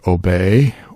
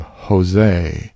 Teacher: an ATA and that's the Greek uh strong e sound and it does not have the long e sound that we have in English